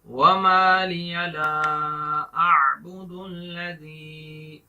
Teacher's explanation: لا کے اوپر مد ہے، لمبا کریں گے، الف مدہ ہے، اس کو ایک الف کے برابر لمبا کر کے پڑھیں گے